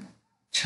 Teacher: देख च अल्प प्राण है और सघोष है छ क्या है अघोष है और महाप्राण है